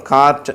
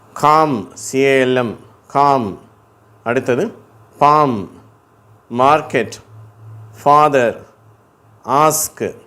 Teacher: இங்கிலீஷ்ல வந்து நம்ம இந்த ஆ சொல்லும்போது அந்த அளவு வாய் திறக்கிறது இல்ல ஆனா அது நெடில் ஓசை தான் ஆ அப்படின்னு தான் சொல்றோம் ஆனா வாய் வந்து கொஞ்சம் அகலமா இருக்கும் அப்படி